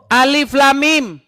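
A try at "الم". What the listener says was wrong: Salah. Alif tuh enggak panjang.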